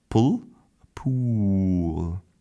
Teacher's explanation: we're also extending the length and making that beautiful rising tone